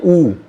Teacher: जैसे आप बोलोगे ना ऊ तो होठों की आकृति गोल हो जाएगी, इसलिए ये गोलाकार है।